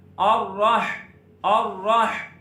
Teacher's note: را کو موٹا پڑھنا ہے اور را کو ہا کے ساتھ ملانا ہے